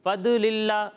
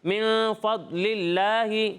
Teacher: دال میں جو ہے وہ کلکلا ہوتا ہے, آواز لوٹتی ہوئی محسوس ہوتی ہے. ضاد کی آواز اس کے مخرج میں ٹھہر جاتی ہے, ٹھیک ہے, آواز ہلتی نہیں ہے.